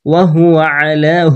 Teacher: হু কিন্তু হলক বা কণ্ঠনালীর শুরু হতে উচ্চারিত হয়